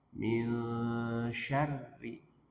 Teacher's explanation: Nun bertemu huruf shin, sya ya. Maka nunnya dibaca ikhfa samar-samar, tidak dibaca en. Tidak dibaca en, tapi disamarkan.